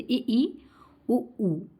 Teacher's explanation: संवृत स्वर में क्या होता है, लगभग शब्द का प्रयोग किया जाता है, लगभग बंद होता है। लगभग हमारा जो है मुंह जब बोलेंगे तो थोड़ा बंद सा रहेगा